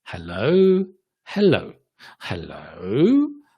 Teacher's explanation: listen to the sounds and the intonation, where it's going up, rising intonation